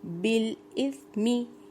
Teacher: سا نرم حروف میں سے ہے، سیٹی کی آواز بالکل نہیں آئے گی